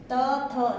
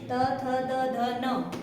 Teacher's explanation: जीभ कहाँ जा रही है हमारी? त, थ, दांतों के साथ लग रही है